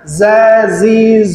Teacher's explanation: kebiasaan dialek orang Indonesia ketika mengucapkan huruf z sukun itu jatuhnya ke s